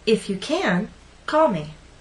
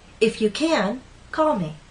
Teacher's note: before a pause for example if you can call me here can is stressed because it's before a pause